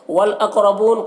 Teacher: ترا کا را کو پر پڑھنا ہے، والدانی یہاں پر وہ الف مدہ ہے اور دال میں کھڑا زبر ہے، دونوں کو 1 الف کے برابر کھینچ کر پڑھنا ہے۔ والاقربون قاف کو پر پڑھنا ہے اور قلقلہ کے ساتھ میں پڑھنا ہے، را کو پر پڑھنا ہے، بونا یہاں پر واو مدہ ہے، اسے 1 الف کے برابر کھینچ کر پڑھنا ہے۔